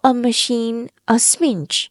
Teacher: hitting only the stressed syllable while skipping the ma sound